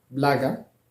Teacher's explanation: O n'étant pas porteur de l'accent tonique se prononce A. L'accent tonique se trouve sur la première syllabe, bla.